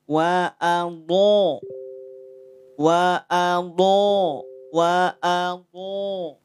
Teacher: perhatikan tidak monyong tidak maju bibirnya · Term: Dod